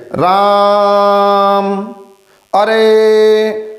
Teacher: अर्थात दीर्घ स्वर को बोलने में 2 मात्रा काल का समय लगता है और प्लुप्त स्वर को बोलने में दीर्घ से भी अधिक समय लगता है।